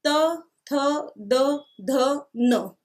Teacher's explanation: Next है त वर्ग, त, थ, द, ध, न, ये दांत इसका उच्चारण स्थान होता है।